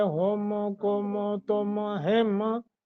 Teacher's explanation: ہم پہ غنہ کریں گے چونکہ آگے با ہے